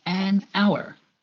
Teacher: the H at the beginning of the word hour is silent. So the first part that is pronounced has a vowel sound, an hour.